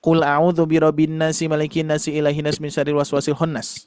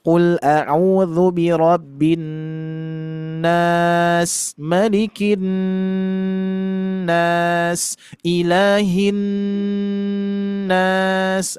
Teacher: Kalau misalkan dengungannya masih kurang, yang seharusnya qul a'udzu birabbin nas, malikin nas, ilahin nas. Nah, terus didengungkan. Yang mana di situ ada gunnah musyaddadah ya.